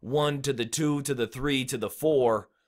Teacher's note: 1 is a stressed syllable 2 is a stressed syllable 1 to the to the to the is the unstressed syllables